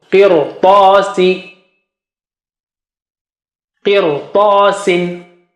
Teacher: Ta is very thick and high